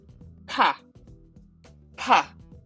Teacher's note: So this is a strong P as in pot, right? So we are blowing out air. So if we combine this P with A, it is pronounced as pa.